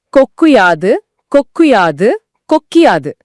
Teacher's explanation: ரெண்டு வார்த்தைகள் சேரும்போது நாக்கு தன் வேலையை சுலபமாக்கி உவை ஈயா மாத்திடுது. · 2 வார்த்தைகள் சேரும்போது நாக்கு தன் வேலையை சுலபமாக்கி ஊவ ஈயா மாத்திடுது. கு கூட்டல் ஊங்கிறது கு கூட்டல் ஈயா மாறிடுது. அந்த ஈ ஓசையும் ஒரு மாத்திரையிலிருந்து அரை மாத்திரையா குறுகிடுது. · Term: குற்றியலிகரம்